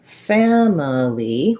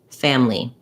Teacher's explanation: i can say family with three syllables and you'll also hear people saying this with just two syllables